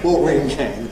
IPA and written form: ˈwɔːʔrɪŋ kæn (watering can)